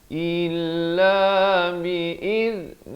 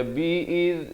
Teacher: Dan lafz jalalah di sini dibacakan dengan nipis.